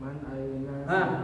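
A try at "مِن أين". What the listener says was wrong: Bukan man ini. Min.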